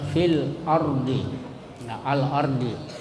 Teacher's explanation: maka lamnya dibaca terang jelas